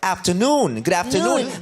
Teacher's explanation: The accent falls on the last syllable.